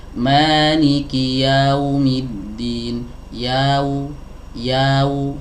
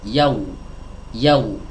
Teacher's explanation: dari huruf ya yang fathah masuk ke huruf wawu seringkali ada yang membacanya itu telat, ya, tidak langsung masuk